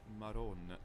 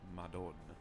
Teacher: in Neapolitan, the D sound between vowels can become a R, that's an alveolar tap.